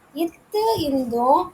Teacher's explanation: மேல்வாய் பல்லோட அடிப்பகுதியும் நாக்கோட நுனியும் பொருந்துறதுனால இத்து இந்து வந்து பொருந்துது.